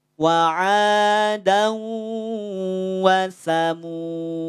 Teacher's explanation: Artinya kalau berhenti di wasamud, maka bukan wasamuda, tapi dalnya jadi sukun.